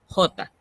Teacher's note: que en españa el español peninsular si tiene ese sonido velar nosotros en américa tenemos un sonido simplemente aspirado